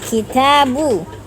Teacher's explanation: huruf ba, makhrajnya adalah mempertemukan kedua perut bibir bagian dalamnya. Yang sering salah adalah mengucapkan ba sering dilipat dua bibirnya, padahal tidak seperti itu.